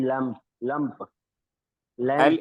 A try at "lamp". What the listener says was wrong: पी जो है यहाँ पे, पी इसको बिल्कुल नरमी के साथ पढ़ना है, लैंप। लैंप, पा, पा को निकालने की कोशिश नहीं करना, बिल्कुल हल्के से ले जाकर के पी में लगा देना, लैंप